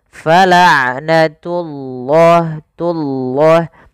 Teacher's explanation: ain sifat bainiyah tidak terlalu ditahan suara ainnya dan tidak terlalu dilepaskan.